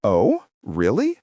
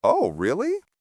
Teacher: if someone says, Oh, really? with a high surprise tone, they're genuinely interested or shocked.